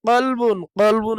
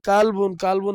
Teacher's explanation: এই যে কফ আর কাফ দুইটা মাখরাজই কিন্তু প্রায় সেম সেম উচ্চারণের দিক থেকে প্রায় সেম সেম মাখরাজও প্রায় প্রায় কাছাকাছি কিন্তু এই দুইটা মাখরাজের ভিন্নতার কারণে এই দুইটা মাখরাজের ভিতরে ব্যবধান আছে যেমন কফ কফের উচ্চারণ মোটা হবে পুর হবে কাফ কাফের উচ্চারণ বারিক বা পাতলা হবে